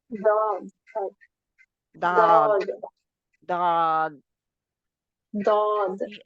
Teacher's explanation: करवट जुबान की जो है वह जाकर दाड़ो पर लगाए